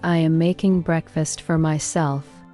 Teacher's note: When you say, I am making breakfast for myself, feel how the important words making breakfast, myself naturally get more emphasis, while the smaller words flow gently between them.